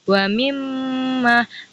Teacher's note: Nah, jadi gunnahnya itu sepanjang 2 harokat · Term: gunnah musyaddah